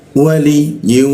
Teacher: wau bertasdidnya kita tahan dua ketukan